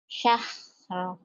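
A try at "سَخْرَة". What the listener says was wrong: Bukan sah. Bukan ha, tapi ka. Example. Exodus. Ekspedisi.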